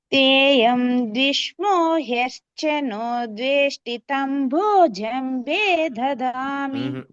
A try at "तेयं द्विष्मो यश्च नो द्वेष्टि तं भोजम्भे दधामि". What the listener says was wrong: స్వరాలు ద్విష్మో దగ్గర పైనకి రావాలి, వస్తుంది స్వరం, అది రావదు. తంబో దగ్గర ఓ కిందికి అనమాట, కొద్దిగా ముందు వెనుకకు అయితే ఉన్నాయి, గమనించుకోవాలి.